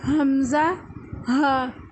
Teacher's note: حمزہ اور ہا یہ دونوں ادا ہوتے ہیں حلق کے آخری حصے سے